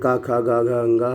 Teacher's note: हम कंठ से बोलते हैं